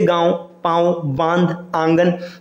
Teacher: जब आप इन सबको शुद्ध रूप से बोलेंगे तो मुख और नाक दोनों से ध्वनि या हवा निकलेगी · इसके उच्चारण के समय हवा मुख और नाक दोनों से निकलती है। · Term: चंद्र बिंदु, चंद्रबिंदु